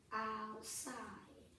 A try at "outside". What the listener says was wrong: I'm missing a sound when you do the first syllable. Do it again. Out. Yeah, but if you don't enunciate that T loud enough, you won't write it.